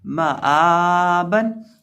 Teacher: हमज़ा के ऊपर खड़ी ज़बर है ना, इसलिए हम हमज़ा को खींचेंगे, एक अलिफ के बराबर लंबा करके पढ़ेंगे